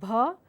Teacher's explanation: when you say a b you're certainly releasing the air but there's a vibration a sense of vibration through your throat so place your hand on your throat and sense vibration so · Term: vibrating sounds